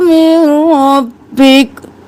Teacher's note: काफ साकिन हो जाएगा, हरकत गिर जाएगी क्योंकि वक्त कर रहे हैं